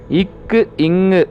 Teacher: நாவினது முதற்பகுதி அன்னத்தை தொடுவதால்